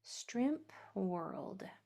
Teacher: Don't forget to pronounce your P when you read the word. It's going to be a little puff of air right in the middle. · Make sure that you're hearing that puff of air come out right there, right after the M.